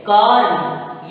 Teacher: इसको बोलेंगे क्रम, इसको बोलेंगे कर्ण। यानी हमारा र आधा है, इसलिए र का उच्चारण जल्दी करेंगे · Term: रेफ